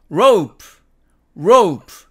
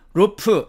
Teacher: 그런데 우리는 rope 이렇게 말하죠. row에서 그 우 부분을 떼버렸음을 알 수가 있습니다